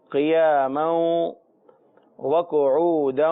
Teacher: کھڑا زبر اسے ایک الف یعنی 2 حرکات کے برابر کھینچ کر پڑھنا ہوتا ہے، تو ہم پڑھیں گے قیاما، لیکن آگے چونکہ واو ہے جو مشدد ہے، لہٰذا اب یہ یوں ہو جائے گا قیاما وقعودا، کیونکہ قعودن کے بعد بھی واو مشدد ہے، قاف کے اوپر پیش ہے اور حروف مستعلیہ بھی ہے، لہذا موٹا ہی پڑھیں گے۔ عین کا مخرج جو ہے حروف حلقی میں سے ہے، حلق سے ادا ہوتا ہے، اور اس کو پریکٹس کرنے سے ہی ہم اچھے انداز میں ادا کر سکتے ہیں۔